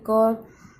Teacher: આ આપણે બોલીએ ક, તો આપણું ગળું છે એ ઓછું ધ્રુજે છે, ઓછું કંપે છે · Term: અઘોષ ધ્વનિ